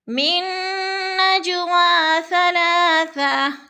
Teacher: من نجوا ثلاثہ، نج پہ جو ہے قلقلہ ہو رہا ہے، جیم ساکن ہے اور حروف قلقلہ میں سے ہے تو ہم نے ادھر قلقلہ کرنا ہے